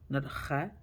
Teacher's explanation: you want to hear the scratching sound, and it's round. It's beginning part of your throat. That letter come from kha, not kha.